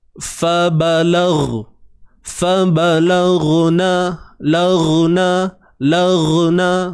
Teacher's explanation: huruf ghain daripada hujung kerongkong kita tuan-puan, daripada makhraj halqiyah, halkum, okey, bahagian kerongkong kita.